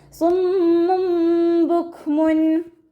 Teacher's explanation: കാഫ് സുക്കൂനാവുന്ന സമയത്ത് കുറച്ച് air pass ചെയ്യണ സൗണ്ട് കൊടുക്കുക